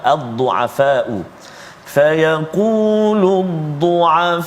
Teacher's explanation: Adapun yang kedua iaitulah mad wajib pada kalimah ad-du'afa'u. Fayaqulu ad-du'afa'u, kan, kita ambil 5 harakat, dia boleh 4 atau 5